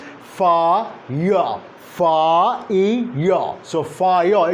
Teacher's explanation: There is no r at the end, as we sometimes mistakenly assume. This is not the actual pronunciation, rather the mistaken pronunciation, and that's because of the L1 interference.